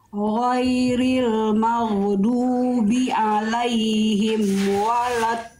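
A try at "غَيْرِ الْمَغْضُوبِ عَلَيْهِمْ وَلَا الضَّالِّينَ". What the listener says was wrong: Yang perlu disempurnakan huruf ghain jangan sampai magdu. Dia nggak punya sifat qalqalah, dia mengalir suaranya. Ghairil maghdubi alaihim. Ghairil maghdubi alaihim. Maghdubi. Maghdubi. Maghdubi.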